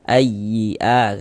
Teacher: huruf ya bertasydid e kita kasih nabr ayyi a tekan seperti itu.